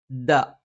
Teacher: നാവിന്റെ അറ്റം മേലെ മുൻപല്ലിന്റെ മുരട്ടിലാണ്. നാവിന്റെ ആരംഭം മേലെ അണ്ണാക്കിലാണ്.